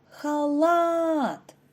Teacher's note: наголос падає на другий склад